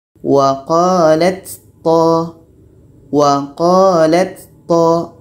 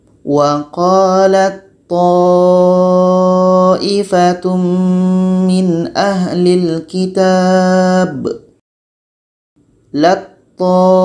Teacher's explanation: Bunyi ta yang berangin hilang karena sudah masuk kepada to. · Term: idgham mutajanisain